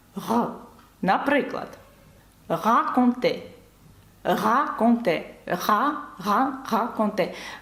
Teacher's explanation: ви бачите це така картава літера так щоб її правильно вимовляти ми вимовляємо її саме горлом цією частиною Вона має вібрувати коли ви кажете г при цьому язик зовсім не задіян він в розслабленому стані Він знаходиться десь біля нижньої частини ясень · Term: звук г